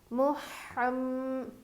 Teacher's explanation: میم پر غنّہ کریں گے تشدید رہنے کی وجہ سے